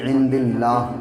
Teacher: جب رکیں گے جیسے یہاں پہ سانس ٹوٹے گی عند اللہ تو وقف کر دیں گے، یعنی زیر کو گرا دیں گے. جب ملا کے پڑھیں گے تو عند اللہ لیشتروا پڑھیں گے، ٹھیک ہے.